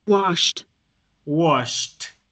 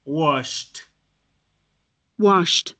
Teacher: Entonces, como no produce vibración, se llama un sonido voiceless consonant, o sea, una consonante que no produce vibración de cuerdas. Cuando le pongo ED, suena como una T.